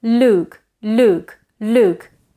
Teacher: that vowel in Luke is not as back it's actually a bit more front than that